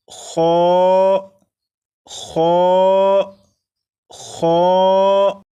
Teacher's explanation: خا کو بھی 1 الف کے برابر کھینچ کر پڑھیں گے